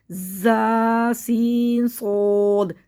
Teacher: زا کو سیٹی سے باریک، سین کو سیٹی سے باریک اور صاد کو سیٹی سے موٹا پڑھیں گے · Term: سیٹی والے حروف